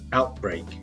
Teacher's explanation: notice the stress there we have stress on both syllables